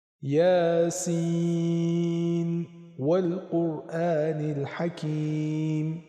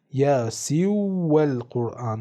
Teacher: بنابراین در سوره یاسین اینطور قرائت میکنیم: یاسین والقرآن الحکیم. پس درسته که اینجا نون ساکن به همراه واو در 2 کلمه مجزا قرار دارن، ولی ادغام در این هنگام صورت نمیگیره، یعنی نباید این عبارت به صورت یاسی والقرآن خونده بشه و قرائت صحیح همونی هست که به صورت اظهار خونده بشه.